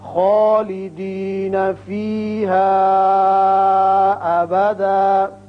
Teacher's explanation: مد منفصل ہے اس کو 3 الف کے برابر کھینچیں گے